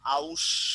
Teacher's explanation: পরের উকার উচ্চারণে আগে এসেছে। যে রস্যুর উচ্চারণটা ছিল পরে, সেই রস্যুর উচ্চারণটা এসে পড়েছে আগে। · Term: অপিনিহিতি